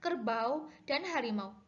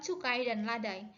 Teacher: posisi lidah ketika memproduksi bunyi ini pada bagian awalnya dan pada bagian akhirnya tidak sama. Ketidaksamaan itu menyangkut tinggi rendahnya lidah, bagian lidah yang bergerak, serta strukturnya. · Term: diftong